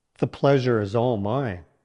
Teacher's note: Emphasize pleasure and mine to convey sincerity and warmth. Use a steady and calm tone to reflect genuine appreciation.